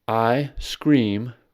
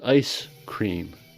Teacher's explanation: I scream and ice cream can sound similar except for the consonant lengthening of s in ice cream.